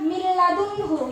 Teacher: Contohnya di sini adalah min ladunhu, yaitu nun mati bertemu lam. Jadi harus dimasukkan tanpa dengung. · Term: idgham bila ghunah, idgham bila gunnah